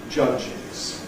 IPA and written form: ˈʤʌʤɪz (judges)